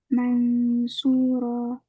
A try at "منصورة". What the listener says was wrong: Make it slightly heavier. Middle tongue needs to raise well. it lacks that إطباق, so you need to raise the middle and the back tongue slightly more.